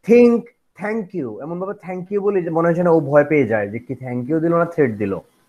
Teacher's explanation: or blade of the tongue tip of the tongue just imagine tip of the tongue approaches or touches the upper teeth only upper teeth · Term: dental